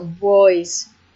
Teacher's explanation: Maybe some typical phonological features were that B, the sound B, is usually followed by a labialization, so boys for boys.